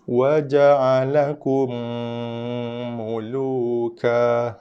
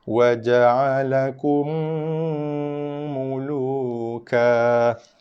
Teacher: Di sini mim mati jumpa mim, bibir kita kacip rapat, kejapkan bibir berserta dengan bacaan dengung 2 harakat, kemudian lepaskan dengan baris di atas huruf mim tersebut. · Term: idgham syafawi